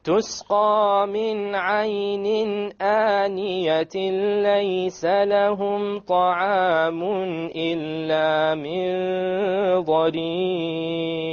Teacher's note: We dropped the noon sound, we emerged it without a ghunna. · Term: idgham without ghunna